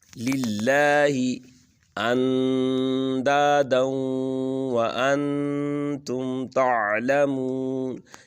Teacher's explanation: للہ کی جو لام ہے یہ لام ترقیق ہوگی